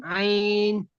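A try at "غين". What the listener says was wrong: না, আইনের উপরে একটা নোক্তা আছে, এখানে একটা নোক্তা আছে, গয়েন।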